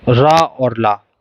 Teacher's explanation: सघोष अल्प प्राणय रा और ला